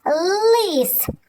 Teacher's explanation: Так, звук л, він твердий, приголосний і позначаємо його однією рисочкою.